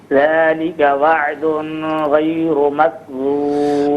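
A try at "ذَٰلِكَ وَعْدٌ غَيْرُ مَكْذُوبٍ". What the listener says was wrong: ایک تو یہ کہ وعدن یہاں غنہ نہیں کیا جائے گا کیونکہ آگے حرف علقی ہے.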